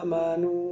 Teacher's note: আলিফটা আপনি এক আলিফ লম্বা না করে 4 আলিফ লম্বা করে ফেলেছেন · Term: লাহানের জালি, লাহানে জালি